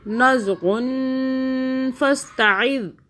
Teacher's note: نزغن فاستعذ، فاستعذ، فاستعذ، آگے عین یہ والا حلق سے پڑھنا ہے اور یہ جو ذال ہے اس کو سافٹ ادا کریں، زبان کو باہر کریں ہلکا سا اور پھر اسے ادا کریں. نزغن فاستعذ، آگے چلیے.